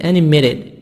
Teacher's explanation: t soft d between two vowels